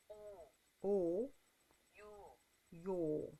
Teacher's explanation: it's still an o sound you're just rounding your lips out a whole bunch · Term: rounded o